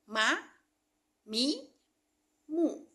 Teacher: huruf ma mempertemukan kedua perut bibir bagian luar.